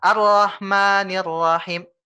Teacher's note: Ro-nya itu kurang ditasdid, Pak ya. Ro-nya itu agak melompat.